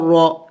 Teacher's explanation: را موٹے حروف میں سے ہے، اس کو موٹا یعنی منہ کو بر دیں گے. موٹے حروف کو پڑھنے کا طریقہ یہ ہے کہ آپ منہ کو بر دیں.